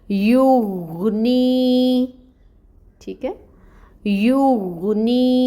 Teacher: یا ساکن سے پہلے اگر کسرہ یہ زیر کی حرکت ہو تو یہ وہاں پر یائے مد ہوتی ہے۔ نی پر یائے مد ہو رہی ہے تو اس نی کو ہم 2 کاؤنٹس لمبا پڑھیں گے